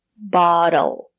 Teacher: The letter T is between vowels phonetically. We pronounce it as the fast D.